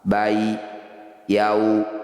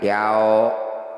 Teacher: Bai, yau, dua-duanya disebut bacaan madlin. Bunyi ya sukun dan waw sukunnya harus dibaca lembut. Tidak boleh yao.